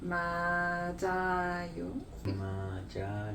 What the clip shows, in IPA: ma-ja-yo